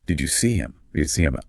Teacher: in unstressed pronouns like him or her, that initial H sound just vanishes. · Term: the disappearing H